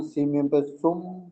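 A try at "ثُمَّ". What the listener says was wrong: সিন মিম পেশ নয়, সা মিম পেশ সুম, মিম জাবার মা, সুম মা।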